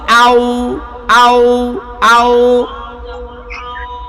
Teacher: আউ যখন বলছি দেখবেন দুই ঠোঁট গোল হইয়া চিকন হইয়া একসাথে হইয়া যায় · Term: ওয়াও